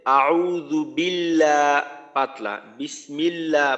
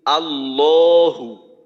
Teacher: আল্লাহ শব্দের ডানে যদি জের থাকে তাহলে আল্লাহ শব্দের লামকে পাতলা করে পড়তে হয়, আর আল্লাহ শব্দের ডানে যদি জবর বা পেশ থাকে তাহলে মোটা করতে হয়।